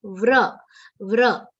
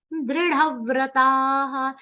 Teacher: va is half, r sound is complete. Do not say it like vru. Vra, vra. A matra should come with r, ram kara.